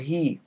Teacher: this h sound is called a glottal fricative · fricative means the air passes through and is not completely stopped glottal means that h is pronounced at the glottis and not say with the lips